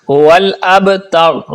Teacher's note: با جب ساکن ہو یعنی اس پر جزم ہو تو اس پر کلکلا کرتے ہیں۔ والابتر، را کو پر پڑھتے ہیں۔